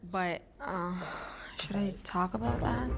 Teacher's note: she removes the T when she's saying but, very American